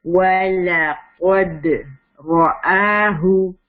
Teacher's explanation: را ہیوی, رَآهُ اور آ ٹو حرکت اسٹریچ